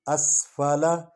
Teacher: سین سے سیٹی کی آواز نکلتی ہے، جزم ہے، پچھلے حرف کے ساتھ مل کر پڑھا جائے گا الف کے ساتھ۔